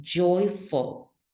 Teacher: Then we have oi, and then this last syllable is not stressed and it's full